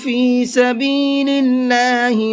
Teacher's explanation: اس اللہ کے لام کو باریک کر کے پڑھیں گے، اس لیے کہ اللہ کے لام سے پہلے زیر ہے، اور اللہ کے لام سے پہلے زیر ہوتا ہے تو اس اللہ کے لام کو باریک کر کے پڑھتے ہیں۔